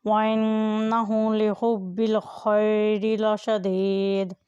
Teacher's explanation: دال یہاں پر ساکن ہو جائے گی، اور جب دال ساکن ہو تو وہ حرف قلقلہ بن جاتا ہے۔ لاشدید، اس کی آواز کو ہلا کر ادا کریں